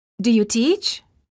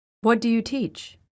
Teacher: The first question of the pair has Rising intonation and the second has falling intonation